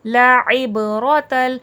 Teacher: اس کو حمزہ کی طرح عبرۃ فلیٹ نہیں پڑھیے گا، عین کا پراپر ساؤنڈ دیجیے گا